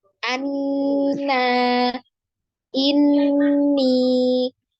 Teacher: nun bertasdid ini wajib gunnah ya. Jadi wajib digunnah atau didengung, kemudian dengungnya ditahan 2 sampai 3 ketukan ya, paling panjang, paling sempurna gunnahnya ya.